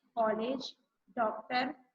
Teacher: देखिए नया नाम है आप लोगों के लिए, इसे कहते हैं आगत, लेकिन आप लोग इसको लिखने के समय लगाते हैं। इसका उच्चारण आ और ओ के मध्य की ध्वनि आ के रूप में होता है।